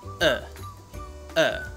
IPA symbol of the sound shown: ə